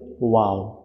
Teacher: number দুই ঠোট গোল করিয়া সামান্য খোলা রাখিয়া ওয়াও এই যে দুই ঠোট গোল হবে এবং সামান্য খোলা রাখতে হবে গোল করে মিলায়ে দেওয়া যাবে না